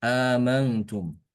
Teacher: Imam Hafiz dia membacanya cuma satu hamzah aja.